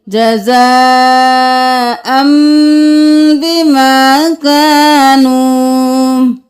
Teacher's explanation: یہاں پر دیکھ لیجئے، جزاء، یہاں پر یہ پرپل ہے تو ہم تنوین کو چھوڑ دیں گے، جزاءن نہیں کریں گے، ہم حمزہ کے ساتھ تنوین کو میم میں مدغم کر دیں گے